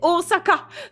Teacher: ne prononcez plus jamais Osaka avec un Z. Parce qu'il n'y a pas de Z.